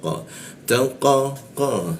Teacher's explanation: lidahnya kita naikkan sehingga tidak ada hembusan udara ketika membaca qa